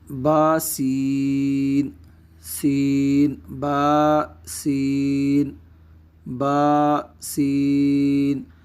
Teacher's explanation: یہاں پہ ہم با کو ایک الف کی مقدار لمبا کریں گے، جبکہ سین کو ہم ایک مد لازم یعنی 2 یا 2.5 الف، 4 یا 5 حرکات کے برابر